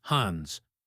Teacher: We do this because moving from N to D to S in hands takes too much effort. We just glide from the N to the S.